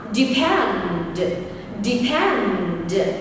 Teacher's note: Từ này gồm 2 âm tiết và âm tiết số 2 được nhấn thì ngữ điệu sẽ là la la.